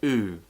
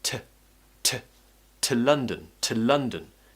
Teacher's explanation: So what's happening is I'm pronouncing to as t, t. I'm using the schwa sound instead of oo, so instead of oo. Just keep the tongue in the middle of your mouth, relax your mouth.